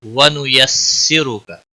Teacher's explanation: را کو پیش کی وجہ سے موٹا پڑھیں گے